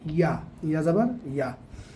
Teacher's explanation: জিহ্বার মাঝখান থেকে ইয়া চেপে